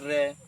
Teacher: जीभ पहले तो पीछे हो जाती है, फिर तालव्य को स्पर्श करते हुए रुड़कती हुई आती है, यानी कि रे। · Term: लुंठित व्यंजन